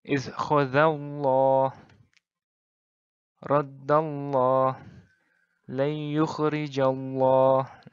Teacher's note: huruf sebelumnya itu berbaris fathah atau dhammah, maka huruf lam hendaklah dilafaz dengan tebal.